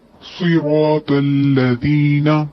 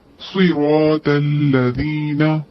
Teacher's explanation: الذین لذینہ نہیں پڑھیں گے کیونکہ یہاں پہ ذال ہے باریک زبان کی نوک جب اوپر اور نیچے کے دانتوں کے درمیان آئے گی تو ذال ادا ہوگا